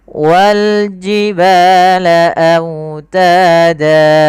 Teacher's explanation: lafal wawnya lembutkan karena dia bacaan lin, sambil dimonyongkan sedikit bibir kita ke depan